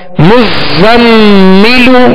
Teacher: زا کو سختی میں پڑھیں گے سیٹی کی آواز پیدا ہوگی